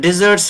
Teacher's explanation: S is pronounced as sa here because T is a voiceless consonant